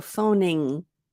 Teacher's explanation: So phoning, it's ing, but the G stops in your throat. It doesn't come out of your mouth like g, g.